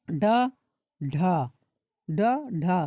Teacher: जिह्वा मूर्धा को स्पर्श कर तुरंत नीचे आए उच्छित व्यंजन कहलाते हैं। जैसे उच्छित व्यंजन ड, ढ, ड, ढ तुरंत जीभ को तुरंत नीचे आती है।